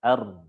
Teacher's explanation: Kalau pengen afsoh yang paling fasih, ada getarnya tapi sedikit. 1 aja. Ar. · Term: 1 getar